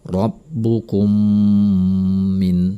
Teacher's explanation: bertemu dengan mim bertasydid ini adalah idgham syafawi atau Mimi maka cara membacanya dengan menahan bunyi mim disertai dengan dengungan selama dua harokat